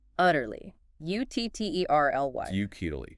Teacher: 3 syllables. Stress on the first.